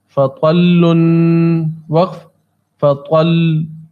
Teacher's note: بس لام پر کچھ سختی کریں گے تو اس سے پتہ چل جائے گا کہ یہ حرف تجدید والا ہے